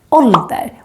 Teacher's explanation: But then we have another word, ålder, with two consonants coming after the å, and therefore it becomes short